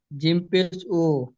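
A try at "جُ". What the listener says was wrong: জিম পেশ, সব উ বলছেন কেন? এক মিনিট, সব উ বলছেন কেন? বা পেশ বু, তা পেশ তু, সা পেশ সু হবে, সবগুলো তো আপনি উ বলছেন।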